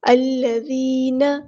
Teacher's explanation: الذین، حمزۃ الوصل سے ہمارا یہ کلمہ سٹارٹ ہو رہا ہے، تو یہاں پہ زبر لگائی ہے الذین، ذال کو ہم نرمی سے ادا کریں گے اور باریک پڑھیں گے۔ یا مدائی، یا ساکن ہے اور اس سے پہلے زیر ہے تو ایک الف کے برابر ہم لمبا کریں گے · نون کی زبر یعنی فتح کو ہم لمبا نہیں کریں گے، زبر کو ہم فتح کہتے ہیں، حرکات کو ہم لمبا نہیں کرتے۔